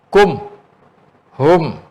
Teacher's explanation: Sebutan huruf mim sukun. Mim sukun tu kita kena jelas sebut. Tak boleh sikit pun dengung.